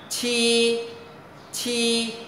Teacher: hơi bật hơi ra nhưng mà cái hơi của chúng ta là Lùa qua khe răng miệng không mở lớn